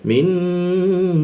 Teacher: Warna pink dan nun bertasjid itu kita tahan 2 ketukan. Jadi cara membacanya itu ditahan dulu.